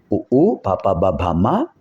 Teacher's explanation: పెదవుల కదలికలతో పెదవులు బాగా కలిసినప్పుడు ఇవి వస్తాయి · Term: ఓష్ట్యములు